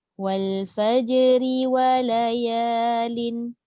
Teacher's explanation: pastikan ra dibariskan dengan bawah dibaca dengan kasrah dengan tarkik